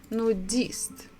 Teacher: we stress the last syllable